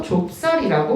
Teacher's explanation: 그래서 이 비읍의 소리는 어디로 들어가고 종성의 자리에 들어가게 되는 것이고 시옷은 된 소리로 발음이 되면서 좁쌀이라고 발음이 됐대요